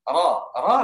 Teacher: Kalau ain, a ketika fathah itu beda ketika ain. Ra, ra lebih tebal tafkhim dia sifatnya. Itu ketika fathah, ketika kasrah tipis.